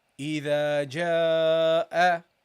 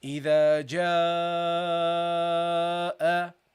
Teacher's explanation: we have to prolong this Alif, and we have to make it twice as long or a little bit longer